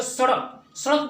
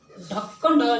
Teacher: उत्क्षिप्त का मतलब होता है फेंकना। जैसे इन शब्दों को बोला जाता है तो जैसे लगता है जीभ जो है फेंक रही है। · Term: उत्क्षिप्त व्यंजन